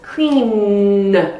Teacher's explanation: that N vibrates strongly in your throat.